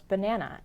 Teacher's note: the first and the third syllables though written with A's are not pronounced a as an apple but uh as an umbrella